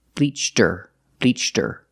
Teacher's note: Because her is not an important word, it's not stressed, the H is silent.